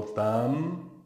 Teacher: vocálico e em bem eu não falo dan tão bem né esse m não é realizado o que se realiza na verdade é um ih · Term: ditongo decrescente